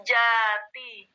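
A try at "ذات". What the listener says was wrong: Jangan ja ya gue baca za. Lidahnya langsung zati ya kan?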